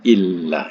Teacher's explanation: Jadi bila in lan nun mati jumpa lam, dia tak bunyi nun tu lagi. Ya, terus bunyi kepada lam. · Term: nun mati bertemu dengan lam